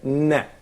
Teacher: here the oral cavity closes so that the air stream comes out from the nose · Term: nasal sound